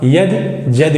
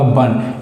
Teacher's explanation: य का ज और व का ब में परिवर्तन हो जाता है।